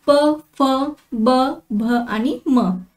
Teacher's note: त्यानंतरचा आहे ओष्ठ्य वर्ण. तर खालच्या व वरच्या ओठांचा उपयोग करून जे वर्ण आपण उच्चारतो त्यांना ओष्ठ्य वर्ण असे म्हणतात.